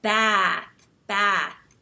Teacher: smile and you have this wide mouth wide set mouth and you hold your tongue up high and when you talk you have a more nasal sound because American English tends to be a little bit more nasal so then you say back back and that stretched out sound